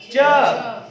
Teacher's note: जब च कह रहे हैं तो देखिए जीभ जो है वो ऊपर चली जा रही है, ऊपर वाले छत को टच कर रही है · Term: तालु